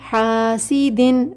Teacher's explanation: یہاں پر لفظ کو ظاہر کریں گے، غنہ نہیں ہوگا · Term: اظہار